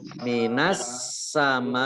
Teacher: Karena bertemu dengan hamzah dalam satu kata. Jadi as-samai itu satu kata. Maka dibaca wajib panjang ya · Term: mat wajib muttasil